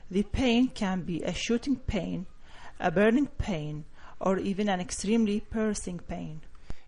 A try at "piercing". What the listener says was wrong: Not bad, but the piercing, you're not pronouncing that one enough, but the rest of your P's were good. Piercing. Piercing.